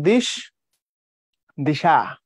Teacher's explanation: না তো কথাটা কিন্তু ছিল মূলত দিশ সেখান থেকে দিশা তাইলে অতিরিক্ত আ যুক্ত হয়েছে কোথায় শেষে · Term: অন্তঃসরাগম